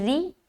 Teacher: آگے ریاء الناسی, را زیر ری, را باریک ہوگی کیونکہ زیر کے ساتھ آ رہی ہے